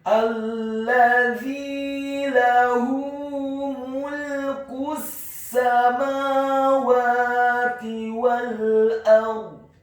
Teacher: Kemudian huruf lamnya ditasydidkan, ditekankan, dibaca tipis, fathah 1 harokat, dan huruf za-nya dibaca tipis, tarqiq, lidahnya agak keluar sedikit, kasrah 2 harokat karena setelahnya ada huruf ya sukun